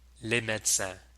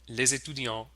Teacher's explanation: the S liaises with the E and makes a Z sound. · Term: Z liaison